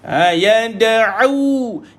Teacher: minta untuk tekankan sikit tengah kerongkong kita tu. Yad'u, jangan pergi hidung.